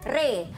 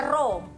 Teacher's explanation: Dia panjang 2 harakat. Jadi sebutannya re. Jangan baca ro.